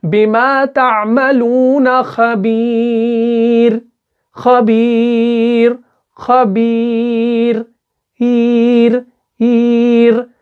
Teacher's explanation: اس را کو باریک پڑھیں گے